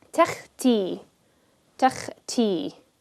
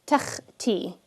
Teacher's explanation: Notice I'm pronouncing the kha with no additional like vowel attached to it. It's just kha.